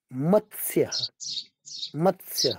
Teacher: मत्स्य नहीं बोलना है, मत्स्य आधा त फिर आधा स